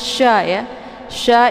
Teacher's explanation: sini ada huruf sya' ya sya ini adalah sifatnya tafasy Jadi kalau tafasy itu menyebarkan angin keluar dari mulut jadi cara bacanya anginnya itu lebih deras